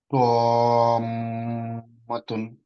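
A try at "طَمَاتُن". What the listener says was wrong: প আর মাখরাজ ঠিক আছে, মাদটা কত হবে? সো আমরা কিভাবে পড়বো, আর একটু লম্বা হতে হবে, হ্যাঁ।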